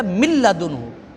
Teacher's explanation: اب جب ہم من لدنہ کیا تو نون کی آواز تو نہیں آئی، جب نون کی آواز نہیں آئی تو یہ ادغام تام ہوگا